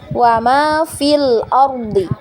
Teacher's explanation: Tapi karena misalnya kita wasal ya bacaannya wa ma fil ardi ya. Fi-nya kita baca tidak panjang lagi ketika kita wasal ya